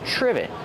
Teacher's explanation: short I like this is and the V sound triv trivet it starts with tr so we make the CH sound like chicken together with the r